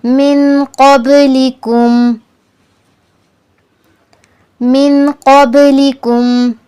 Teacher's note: با پر قلقلہ کرنا ہے، لفظ کو ہلا کر پڑھنا ہے با کو۔